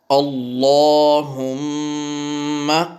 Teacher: لفظ اللہ کے لام کو پر پڑھیں، موٹا کر کے پڑھیں اور میم پہ غنہ کریں۔